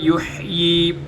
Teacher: یحیی ہا گلے کے سب سے اوپر والے حصے سے ادا ہوگی۔ قال انا یحیی، یہاں پر یا کو نہیں پڑھا جائے گا کیونکہ پورے قرآن کے اندر کوئی بھی ایسا حرف آ جائے جس کے اوپر کوئی حرکت نہ ہو تو اس کو نہیں پڑھا جاتا، یا کے اوپر کوئی حرکت نہیں ہے لہٰذا یا کو نہیں پڑھا جائے گا۔